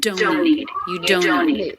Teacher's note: T completely dropped. The N in don't links directly into the N in need.